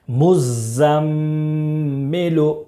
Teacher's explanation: مزمل، میم زا پیش مز، زا میم زبر زم، مزم، میم زیر می، لام پیش لو، مزمل، مزمل۔ میم مشدد میں 1 الف کے برابر غنہ کریں گے